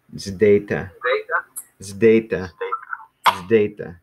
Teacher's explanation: It's kind of like there's like a Z and a D back to back, like zeta.